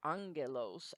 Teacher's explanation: if you have two gammas in a row they're not pronounced just as G but as ng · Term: NG sound